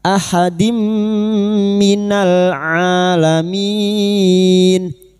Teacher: Ha ha hi hu ahadim kasar tanwin bertemu mim idgham bigh bununah masuk dengan mendengung masuk pada huruf mim dan mendengung selama tiga harakat